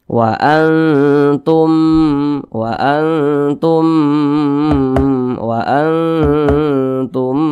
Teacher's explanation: mimi cara bacanya itu diengungkan Wa Antum Wa Antum Wa Antum didengungkan itu suaranya itu kita tahan Nah kita panjangkan panjangnya itu dua harakat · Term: idgham mimi